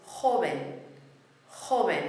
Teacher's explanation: It's a word ending in an N. Beat on the last but one syllable.